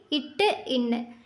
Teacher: நாவின் நுனி அன்னத்தின் நுனியே பொருந்துவதால் பிறக்கும் எழுத்துக்கள்.